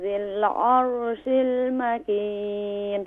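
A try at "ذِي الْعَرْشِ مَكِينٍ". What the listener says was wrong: عرش نہیں ہے، عرشی مکین. ذال کو کیسے ادا کرتے ہیں؟ ذی کیونکہ یائے مدہ ہے تو اسے ایک الف کی مقدار کھینچیں گے.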